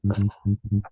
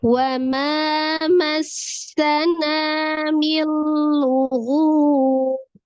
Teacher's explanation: Ada alif sebelumnya fathah di huruf mim. Ma dibaca 2 harokat ya.